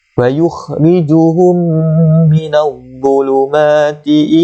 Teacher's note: Mim mati bertemu dengan mim, maka hukum dia idgham mislin saghir. Minadh dhuluma wa luma zuluma ti ilan nun.